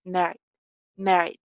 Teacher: Second syllable जो unstressed है, उसको बहुत clearly बोला नहीं जाएगा.